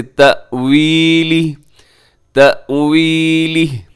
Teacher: وقف کریں گے تو ہا ساکن ہو جائے گا، کھڑی زیر ہے لیکن ہم اسے ساکن کر دیں گے۔